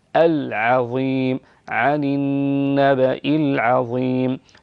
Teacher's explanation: العين قرأتها بالتفخيم وحقها أن تكون مرققة